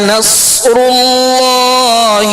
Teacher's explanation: صاد پر جزم ہے, صاد ساکن ہے لہذا اس کی آواز ہلے گی نہیں, صاد کو پر پڑھنا ہے, سیٹی کی آواز میں پڑھنا ہے.